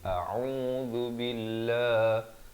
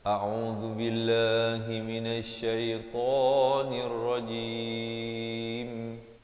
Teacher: zal bari dhammah di hujung lidah, dan billah dibacakan nipis 2 harakat.